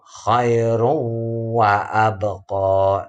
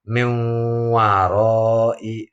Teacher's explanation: semuanya itu ada rasa getar di hidung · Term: idgham bi gunnah